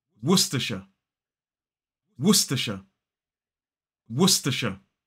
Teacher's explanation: 3 syllables, the stress falls on the first. · We don't pronounce the R in this word as an isolated word.